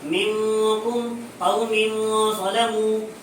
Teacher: نون ساکن اور تنوین کو ان کے مخرج میں چھپا کر غنہ زائدہ کے ساتھ پڑھیں گے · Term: اخفاء حقیقی